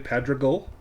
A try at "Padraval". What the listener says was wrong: Padreval. Yes. With a V.